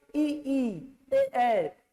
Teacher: जीभ का सामने वाला भाग प्रयोग में आ रहा है इ इ ए अ में · और इसका कंपेयर आप करोगे ई ए, तो आपका जीभ का सामने वाला भाग जो है दांत में ऐसा फंस रहा है, तो जीभ का सामने वाला भाग प्रयोग में आ रहा है ई ए में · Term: अग्र स्वर